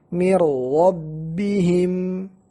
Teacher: Nun sakinah seperti masuk ke dalam ra, dan ra yang kedua menjadi musyaddad, ra yang setelah nun sakinah. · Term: idgham